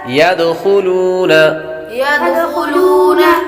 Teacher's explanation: دال کو قلقلہ کریں گے، دال حروف قلقلہ میں سے ہے